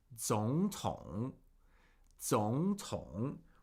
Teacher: when we have 2 consecutive third tones, they get pronounced as second tone, third tone. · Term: 2 third tones